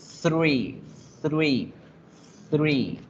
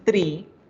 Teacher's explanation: La lengua va en la mitad de los dientes para generar esa pronunciación correcta, 3. Porque si dicen tree, eso es árbol.